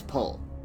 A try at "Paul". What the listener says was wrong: You're saying pool, damn it.